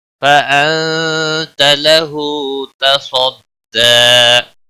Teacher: صاد حروف مستعلیہ میں سے ہے، پر پڑھا جائے گا